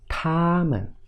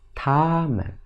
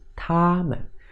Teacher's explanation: neutral tone sounds very like first tone. The sound is slight and short.